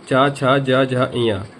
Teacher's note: च वर्ग को बोलते हैं च, छ, ज, झ, ञ। यह हमारा उच्चारण होता है तालु। · उसका पिछला भाग जो होता है वो तालु कहलाता है। अपनी जीभ को उठा करके आप मुंह के ऊपर हिस्से को टच करेंगे अंदर से तो पीछे की तरफ टच करेंगे तो वो हमारा तालु होगा।